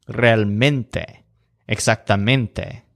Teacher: They're very similar to English words, but in each case, the stress is on the syllable that sounds kind of like mint.